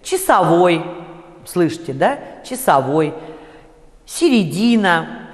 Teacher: Во второй степени редукции после мягких согласных на месте вот этих трех звуков «о», «а», «э» произносится короткий редуцированный звук, похожий на ослабленный «и», но все-таки с некоторым призвуком «э». Но он очень короткий. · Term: ерь